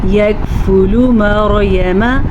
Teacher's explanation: را ساکن سے پیچھے زبر ہے تو را ساکن کو پر پڑھیں گے